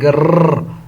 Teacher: जब आप टंग को, जुबान को आप टेप करते हो, बार बार दबाते हो